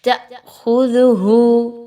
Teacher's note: خا حروف مستعلیہ میں سے ہے، اس کو پر پڑھا جائے گا، دال نرمی سے پڑھی جائے گی، زا کی طرح نہیں پڑھنا، تأخذہ یہ آواز نہیں آنی چاہیے۔